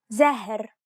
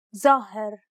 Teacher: The long A in the second example sounds deeper than the first. This is due to the presence of the dark letter impacting on the adjacent vowel. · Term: emphasis spreading